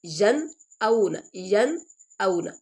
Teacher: نون کو ظاہر کر کے پڑھا جا رہا ہے، ین کیونکہ آگے حمزہ آ گیا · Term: اظہار